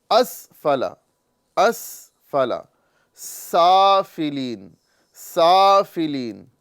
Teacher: सीन की अदायगी में सीटी निकलेगी और सा की अदायगी में सीटी नहीं निकलेगी।